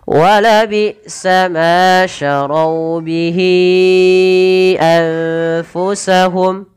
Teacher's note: ada nun sukun bertemu fa, samarkan ke fa